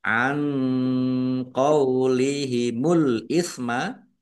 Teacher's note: nun sukun bertemu dengan huruf qaf bacaan ikhfa dibaca samar-samar